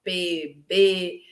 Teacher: né quem que é oclusivo bilabial vocês vão estudar isso melhor bilabial né que uso os dois lábios